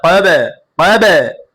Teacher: কফ বা জবর কব, কব, কফ বাকে ধরেছে, বা কিসের হরফ? কলকলা হরফ। প্রতিধ্বনি আওয়াজ দিয়ে পড়তে হবে।